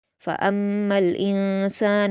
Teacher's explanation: मीम मुशद्दद है तो गुन्ना किया जाएगा